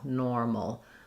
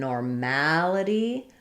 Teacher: It's just a reduced little syllabic L, normal. But in normality, now all of a sudden my MAL syllable is stressed and I have a clear vowel there